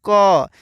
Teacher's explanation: देखो दोस्तों, इसमें कम को बोलने में आ रहा है, जैसे क, यानी क में आ रहा है, यानी क में अ छुपा हुआ रहता है, इसका भी आवाज़ आ रहा है, इसके साथ क के साथ अ का भी आवाज़ आ रहा है। और डायरेक्ट क की केवल पढ़ेंगे तो क, इसमें अ नहीं आ रहा है तो क।